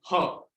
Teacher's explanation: ह, आप बोलिए ह, आप ह बोलेंगे तो कंठ्य उसका उच्चारण स्थान आप महसूस कर पाएंगे कि कंठ से साउंड आ रहा है